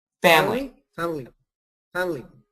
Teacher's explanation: Try it in 2 syllables. Get rid of the I.